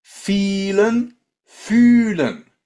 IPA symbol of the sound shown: yː